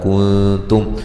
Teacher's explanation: یہاں نون ساکن کا اخفا ہے باریک